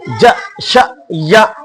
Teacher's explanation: زبان کی بیچ سے ہیں ج ش ی, جیم حمزہ زبر ج, شین حمزہ زبر ش, یا حمزہ زبر ی, ج ش ی.